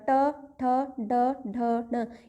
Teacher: मिड में touch यानी कि मुर्धा